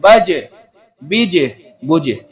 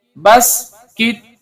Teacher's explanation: اس میں بھی قلقلہ ہوگا اور ایک لوٹتی آواز سنائی دے گی